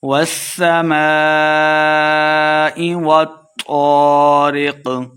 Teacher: والسماء والطارق، والسماء سین مشدد ہے، واو کو سین کے سامنے لا کے پڑھنا ہے، الف مدہ اور اس کے اوپر مد بھی ہے تو ہم نے اس کو خوب لمبا کر کے پڑھنا ہے